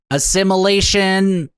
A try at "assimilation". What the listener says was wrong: No, not... You, that sounds like you're saying simulation.